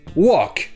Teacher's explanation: dans le mot walk, le L est muet. Ça se prononce juste walk.